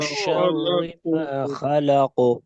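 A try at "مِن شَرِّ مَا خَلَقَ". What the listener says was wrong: शर्रे नहीं है, शर्री, शर्रे नहीं, शर्री है। मिन शर्रि मा खलको, من शर्रि मा खलको,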